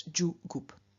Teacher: g is reduplicated as the voiced, unaspirated palatal, and that is j. And so the reduplicative syllable is ju, and the whole form is ju gup.